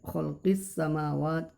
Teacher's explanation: Ini alif lam diikuti khalqis samawat, as-samawat. Jadi dia alif lamnya itu tidak dibunyikan langsung ke huruf sin. Khalqis samawat syamsiyah. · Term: al syamsiyah